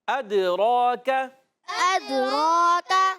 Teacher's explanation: Good, تو را پر کھڑا زبر، ایک الف کھینچیں گے، را کو پر رکھیں گے، کاف کو باریک رکھیں گے۔ کاف کا مخرج زبان کی جڑ تالو کا سخت حصہ، نرم نہیں، زبان کی جڑ اور تالو کا سخت حصہ، یہ کاف کا مخرج ہے۔